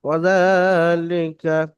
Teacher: জালের উপর খারা জাবার, খারা জাবার আলিফ মাদ্দার সমতুল্য, খারা জাবার আলিফ মাদ্দার মতো এক আলিফ পরিমাণ টান দিয়ে পড়তে হবে।